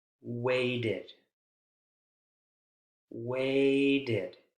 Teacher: Sounds like an additional syllable, right? With the schwa and the D consonant sound.